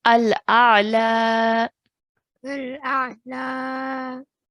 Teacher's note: Because of the blank ya straight after it, this fatha will change into a vertical fatha. So now we are going to stretch at the end.